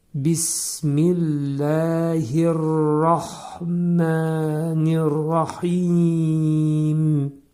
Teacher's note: Sonda gələn mim hərfini izhar edirik. Yəni ağız yumulur və mim hərfi bildirilir.